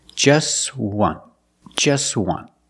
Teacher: we see that t is between consonants so it's silent link The Sounds together